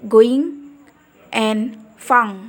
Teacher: Ridge Hai contohnya no Hai dan Hai dan terakhir yaitu Eng di bagian oral diblokir dengan menekan bagian belakang lidah ke langit-langit lunak atau velar